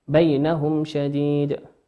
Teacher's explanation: ميم ساكنة في بينهم، والشين أتى بعد حرف الشين، والشين من حروف الإظهار تظهر كما هي